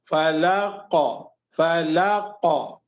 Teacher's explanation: आखिर में काफ के ऊपर आप जब रुक रहे हैं तो वहां पर कलकला होना चाहिए, यानी एक्स्ट्रा हुआ